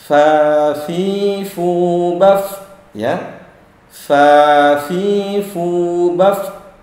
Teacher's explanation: huruf fa ada desisnya atau mengalirnya angin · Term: sifat hams